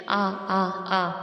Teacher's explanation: حمزہ کا مخرج اقصی حلق یعنی حلق کا سینے کی جانب والا حصہ ہے